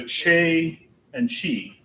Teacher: it's a cha sound in ecclesiastical latin